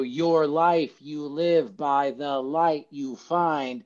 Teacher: This is just an unstressed, stressed syllable taking turns. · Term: iambic pentameter